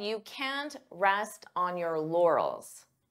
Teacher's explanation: native speakers often pronounce t as a flap T which means we don't push out that puff of air